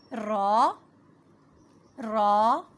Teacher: را کی ادائیگی کرتے وقت منہ کو تھوڑا سا گول کریں گے اور زبان کا اگلا حصہ مسوڑوں سے پچھلے حصے پر ٹکرائے گا